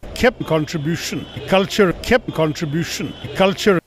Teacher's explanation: aspirates his k sounds over his g sounds